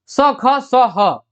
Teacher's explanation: ये संघर्षी व्यंजन है। जब आप इसको बोलेंगे तो आपको जो है घर्षण होगा, गले में